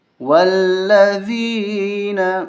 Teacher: یہ ذال ہے، اس پہ زبان باہر نکال کے اس کو پڑھا جاتا ہے۔